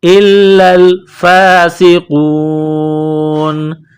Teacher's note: الفاسقون کڑا زبر ہے ایک الف کے لمٹ میں کھینچنا ہے سین میں سیٹی کی آواز پیدا کریں گے سین کو باریک کریں گے قاف کو واو کے ساتھ ملانا ہے قاف کو موٹا کرنا